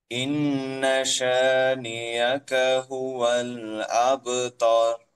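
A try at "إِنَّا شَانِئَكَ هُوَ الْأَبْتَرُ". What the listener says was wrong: এখন গুন্নার পরিমাণ কম হয়ে গেছে, গুন্নাগুলো আপনার একটু লেট করে সময় নিয়ে আদায় করতে হয়, তাহলে সুন্দর শোনা যায়, গুন্নাটা যথাযথ আদায় হয়।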